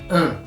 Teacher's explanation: the duh sound frequently disappears because and is weakly stressed. We need to squish it in to be able to meet the rhythm that we've set for our sentence. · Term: reduction